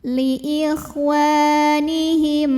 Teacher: Maka mim sukun ini kita baca dengan jelas bunyi M-nya. Izhar, tidak perlu ditahan.